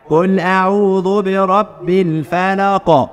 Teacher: القاف قلقلة عشان هي في نهاية الايه